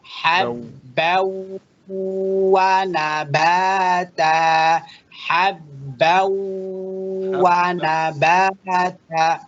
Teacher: Tanwin kita berikan waw, Bapak dengungkan dan ditahan.